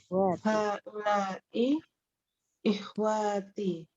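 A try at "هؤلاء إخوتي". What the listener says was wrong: Itu wawunya panjang atau pendek, Om? Jangan sampai salah, Om ya. Ikhwati, ikhwah. Ingat kalau ikhwatun itu kan jamak dari akhono ya. Itu jamak muzakkar. Ikhwatun itu setelah waw tidak ada alifnya, wawnya pendek.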